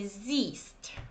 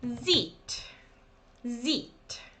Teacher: you don't pronounce H and you say siehst. Okay, it's a long E. Sie, es, sieht.